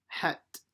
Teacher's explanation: pronounced as a big ha in the middle of the throat